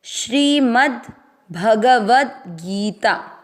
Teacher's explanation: व के साथ आधा द, भगवद गीता, गी की मात्रा बड़ी है, लंबा खींचना है